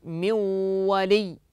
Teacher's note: فقد جعلت النون واوا وكذلك قمنا بادغام بغنه